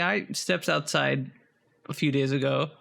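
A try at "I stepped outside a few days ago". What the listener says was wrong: You're doing S at steps.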